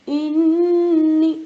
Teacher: نون کے اوپر تشدید آیا تو نون پہ تشدید آتے ہی میں نے نون کو غنہ کیا